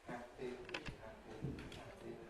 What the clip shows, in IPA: ˈhæpi